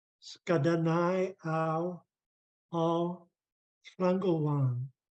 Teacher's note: we take the long A and the long U and blend them so that it becomes ow